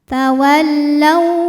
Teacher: sebab ada wau sukun didahului harakat fathah maka dibacanya cukup dilembutkan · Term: harfu Lin